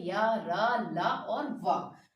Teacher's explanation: स्वर और व्यंजन के बीच की स्थिति जो ना पूर्ण तरीके से स्वर है और ना ही पूर्ण तरीके से व्यंजन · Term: अंतस्थ व्यंजन